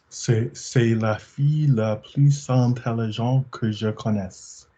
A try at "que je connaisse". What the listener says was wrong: Que je connaisse, because I'm hearing j'ai. Mouth closed. Push from the diaphragm.